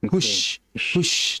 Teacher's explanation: kita perhatikan kenapa suara itu deras dan jelas. Dikarenakan tengah lidah naik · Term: huruf shin